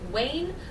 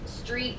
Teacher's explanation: when a liquid before the vowel is replaced by a Glide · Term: gliding